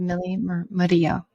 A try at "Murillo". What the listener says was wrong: You have to roll your R's a little bit better.